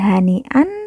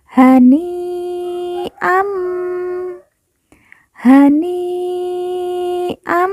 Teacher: an kita lemburkan langsung masuk huruf mim